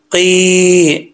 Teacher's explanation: قاف کی دو نقطوں والا قاف ہے تو اس کو فل ماؤتھ پڑھا جائے گا، یعنی پر پڑھا جائے گا